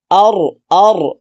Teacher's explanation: দ্বিতীয় অবস্থা হলো যে রার উপরে যখন সাকিন হবে, আগের হরফে যখন জবর অথবা পেশ হবে তখন রাটাকে আপনি পুর করে পড়বেন। দেখেন রাটা সাকিন হয়েছে, আগের হরফে জবর হয়েছে, আমরা রাটাকে পুর করে পড়বো।